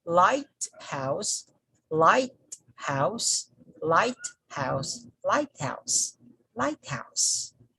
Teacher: we put the stress on the first syllable and the no stress on the second syllable